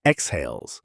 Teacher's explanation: Stress falls on the second syllable, and that stressed vowel is the diphthong, eei, the same gliding sound as in bait.